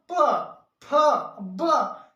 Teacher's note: ओष्ठव्य, ओष्ठव्य जब हम बोलते हैं जैसे प फ ब, जैसे बोलते हैं प फ ब तो दोनों होंठ चिपकता है